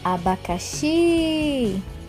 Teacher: na palavra abacaxi, a sílaba tônica é o xi.